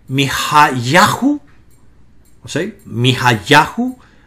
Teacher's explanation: El acento cambia de la penúltima sílaba a la antepenúltima sílaba.